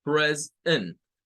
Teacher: Después de haber agregado la S, viene una segunda sílaba que es la E y la N, con el schwa. Esa E suena a schwa.